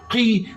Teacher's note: قاف کے نیچے زیر ہے، قی، قاف کو بغیر کھینچے پڑھیں، مگر قاف خلخلہ ہے، موٹا ہے